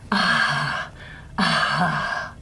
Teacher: I've still got some voicing, but you can hear a lot of breath, a lot of air coming out. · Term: breathy voiced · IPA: [a̤]